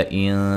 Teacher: نون ساکن کا اخفا ہے باریک